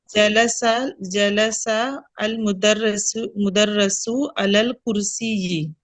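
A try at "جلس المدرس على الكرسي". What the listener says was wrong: मुदर्रिसु, रुसु नहीं, रिसु, ठीक है, मुदर्रिस होता है। तो जलसल मुदर्रिसु, बोले।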